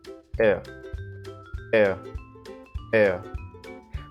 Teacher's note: To produce this sound, we need to move from the E sound to the schwa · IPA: /eə/